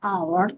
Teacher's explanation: H harfidan boshlanyapti-ku deyishingiz mumkin, lekin biz buni aytgan paytimizda talaffuzida H harfi tushib qoladi, hour deb o'qiladi